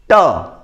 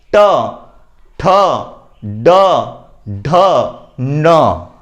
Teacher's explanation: तो जो ध्वनि है, जीभ है, वह जो मूर्धा है उसे हल्का सा स्पर्श करती है और यह ध्वनि निकलती है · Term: मूर्धन्य